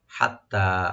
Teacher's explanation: হাটাকে right দিয়ে তাটাকে double করে এক আলিফ টানবেন